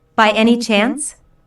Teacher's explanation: Means the same as possibly. Notice the rising intonation, which is used in yes/no questions to confirm that something is true.